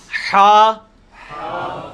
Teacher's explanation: یہ وسط حلق سے یعنی حلق کے درمیان سے نکلتا ہے. یہ کبھی آپ وہ گلے والی ٹافی کھائیں نا، وہ والی آواز ایکزیکٹ بالکل کلیئر وہاں سے جو نکلتی ہے نا، یہ ہا کا مخرج وہی ہے.